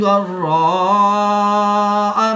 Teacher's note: الف مدہ کے بعد حمزہ اسی کلمے میں ہے تو یہاں پر مد متصل ہوگی، 3 سے 5 الف تک کھینچ کر پڑھیں گے